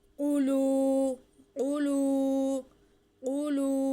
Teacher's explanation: قاف موٹا قاف ہے اور اس کے اوپر پیش ہے، تھوڑا منہ کو گول کر کے آواز کو بھر کے ذرا پھر پڑھیں